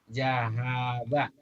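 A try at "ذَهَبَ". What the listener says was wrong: Ja melulu ya Pak. Ja utang tuh. Za. Za. Za. Za. Zahaba.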